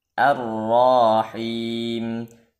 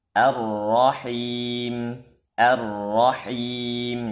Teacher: memanjangkan harakat fathah pada ra sehingga melahirkan Alif sesudah ro